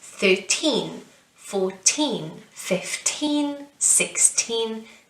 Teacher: teen is always the stressed syllable